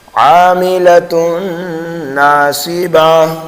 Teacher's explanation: تو وقف کی حالت میں گول تا کو ہائے ساکنہ سے بدل دیا جاتا ہے، اس کو کہتے ہیں وقف بالابدال۔